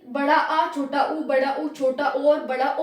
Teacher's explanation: जब हम पश्च स्वर बोलेंगे यानी बड़ा आ छोटा ऊ, बड़ा ऊ छोटा ओ और बड़ा ओ बोलेंगे, तब हमारी जीभ का पीछे वाला भाग उठता है।